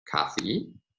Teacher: lectures we find several different pronunciations of the word initial consonant it can be pronounced as Kathy with a voiceless velar stop